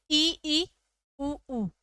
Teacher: इ ई उ ऊ यानी कि अपना मुंह थोड़ा बंद है। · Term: संवृत स्वर